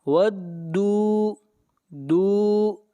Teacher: دال کو کھینچ کر پڑھیں گے ایک الف کے برابر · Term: واو مدہ